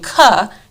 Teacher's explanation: they're putting a schwa sound on the end